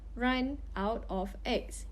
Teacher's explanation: liaison, or the process of words running onto the next word, does not occur in Singlish